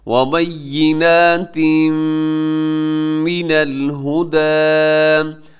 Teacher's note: یہاں پر تنوین ہے اور تنوین کے بعد آگے میم آ رہا ہے، تو یہاں پر ادغام ہوگا لیکن غنے کے ساتھ